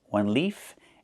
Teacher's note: One leaf with the F sound with no voice.